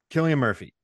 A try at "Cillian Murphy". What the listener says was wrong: No, Killian. It's pronounce the C as a hard C.